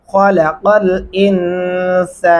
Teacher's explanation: ख्वा को मोटा और पुर करके पढ़ेंगे और क़ाफ गले से अदा करेंगे।